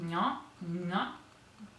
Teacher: So next we have the palatal sounds, and the palatal sound is this one, and it's pronounced nya, nya. So it's palatal, between the tongue and the roof of the mouth